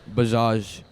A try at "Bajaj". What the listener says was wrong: It's actually Bajaj. Like, not so much stress on the first A. Actually, the second A.